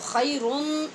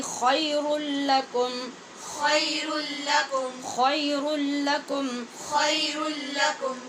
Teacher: دو پیش ہے نا را کے اوپر، اس لیے کہ دو پیش کی تنوین کے بعد لام حروف یرمالون میں سے ہے جہاں غننے کے بغیر ادغام ہوتا ہے، تو خیرن نہیں پڑھنا۔